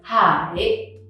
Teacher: You go a bit up and then low and then a little bit up again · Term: question tone